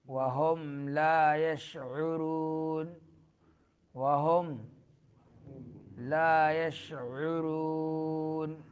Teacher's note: شین میں تفشی، آواز پھیل جاتی ہے منہ کے درمیان